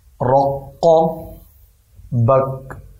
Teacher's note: اس کے آپ دو حصے کریں، رق بک۔ پہلا جو قاف ہے اسے موٹا پڑھنا ہے